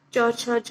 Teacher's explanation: फिर जो middle portion मैंने आपको बताया कि बॉडी ऑफ द टंग, उससे हम च, छ, ज, ये साउंड्स निकालने की कोशिश करते हैं